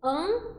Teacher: Por isso, um fonema pode ser representado por mais de uma letra, porque o A e o N juntos representam apenas um fonema, que é o A nasalizado